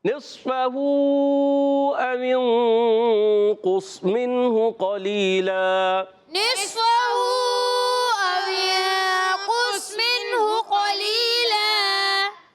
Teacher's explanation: 2 زبر کی تنوین کو وقف میں الف سے بدل دیں گے، اس کو کہتے ہیں وقف بالابدال، مال الف وقف بالابدال، مال الف گڈ۔